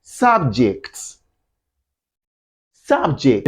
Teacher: You have to stress the first syllable.